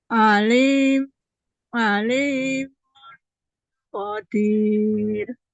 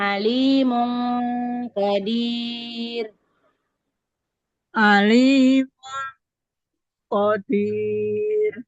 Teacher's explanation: Didengungkan dulu tanwin bertemu kopnya. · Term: ikhfa